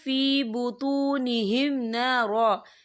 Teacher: وقف کی صورت میں 1 زبر پڑھا جائے گا، 2 زبر نہیں پڑھے جائیں گے۔